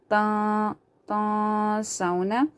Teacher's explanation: Nan nasa bil birri wata. See, noon is silent, and after that there is seen from haruf ikhfa, so you have to hide the sound of this noon into the nose.